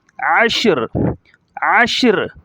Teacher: را کی دونوں زیروں کو ظاہر نہیں کیا جا رہا